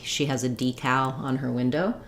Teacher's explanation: in decal first syllable stress and then second syllable does have the clear a vowel